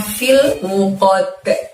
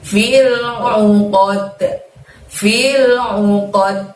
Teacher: Lalu di depan lafadz fil ada lafadz al-uqadi, tapi karena di ujung ayat kita membaca waqaf, dalnya disukun maka harus mantul cara membacanya. Karena terjadi qalqalah lagi, yaitu qalqalah kubro ya teman-teman ya.